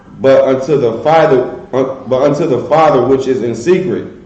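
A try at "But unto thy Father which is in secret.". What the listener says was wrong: Is it thy Father or the Father?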